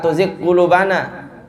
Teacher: Ya, jangan diidghamkan, harus jelas ghainnya.